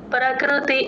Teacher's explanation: రెండు లిప్స్ లోపలి వైపు క్లోజ్ చేస్తే మీకు ఆ ప కింద రకారం కరెక్ట్ గా వినిపిస్తుంది. ప్రకృతి ఆ క్రూ తేల్చి చెప్పాలి. ఆ ప్రక ఎంత స్ట్రెస్ ఇచ్చి చెప్తామో